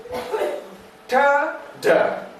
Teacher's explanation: The air is blocked behind lips and immediately released. T, D, the air is blocked behind the teeth ridge and immediately released. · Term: plosive